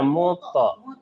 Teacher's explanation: Kalau mut ibu baca berarti dia belum qalqalah. Ada pantulannya muto.